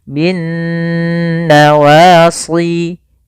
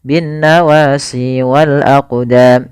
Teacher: Cara membacanya yaitu suara nunnya kita tahan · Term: ghunah